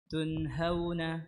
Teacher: نون ساكنة مظهرة قبل الهاء المفتوحة